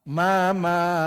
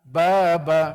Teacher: sebab dikatakan mim dengan ba ni satu tempat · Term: satu makhraj